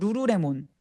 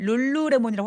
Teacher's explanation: 룰루레몬이든 루루레몬이든 입천장에 혀가 닿는 게 공통적인 거예요.